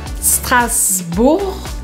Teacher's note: E eu não pronuncio o G no final.